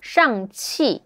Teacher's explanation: the movie's Chinese name is Shang-Chi, the falling tone